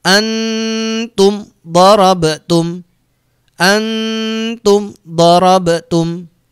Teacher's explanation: Kemudian mim disukun ketemu huruf dot, harus dibaca jelas mimnya, tidak boleh dengung, harus dibaca jelas di bibir. Bibirnya harus rapat, tidak boleh mantul. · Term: mim sukun